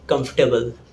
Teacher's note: in this word we have 3 syllables, not 4. It's pronounced as comfortable, not comfortable.